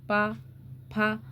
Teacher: तो प बोल के देखिए आप प फ तो कौन सा उच्चारण स्थान है? ओष्ठ से बोले जा रहे हैं। दोनों ओठ टच हो रहे हैं ना इसमें।